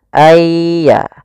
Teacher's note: Kalau di sini hurufnya adalah ya, maka masukkan nunnya kepada ya sehingga nunnya hilang, tinggal ya-nya. Ayya. Langsung ditasdidkan dia seakan-akan ya-nya 2. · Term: idgham bi gunnah